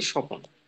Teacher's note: শব্দের মাঝখানে একটি স্বরধ্বনির আগমন ঘটছে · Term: মধ্য সরাগম